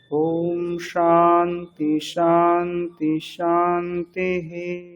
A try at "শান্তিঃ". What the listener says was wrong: এখানে শান্তি বলে একটা বিসর্গ রয়েছে, বিসর্গটাকে স বলতে হবে। ওম শান্তিশ এরকম, ঠিক আছে।